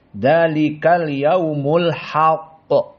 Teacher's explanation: Maka qaf di sini dalam keadaan mufakhamah tafkhim.